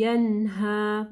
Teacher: नून साकिन के बाद जो है हा है, ठीक है, तो यहाँ पे इजहार होगा, ठीक है, यन्हा यानी नून को हम लोग क्लियर पढ़ेंगे।